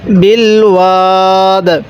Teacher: আমরা এই দালটাকে ধাক্কা দিব যাতে করে আমাদের এই দালের মধ্যে কলকলা উচ্চারণ হয়